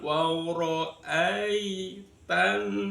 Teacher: Wawro ini ro berokat fathah dibaca tafkhim. Wawro ai ya sukun sebelumnya ada fathah.